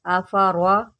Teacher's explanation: را کے اوپر زبر ہے، اس کو موٹا کر کے پڑھیں